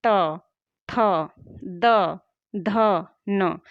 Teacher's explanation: त वर्ग के पांचों वर्ण का उच्चारण करते समय क्या दांत का स्पर्श नहीं हो रहा है?